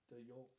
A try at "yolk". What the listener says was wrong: Why are you so over pronouncing the L? The yolk? Yolk? Are you yodeling? Okay, is there a fucking P pronounced in psychic? Night? The G?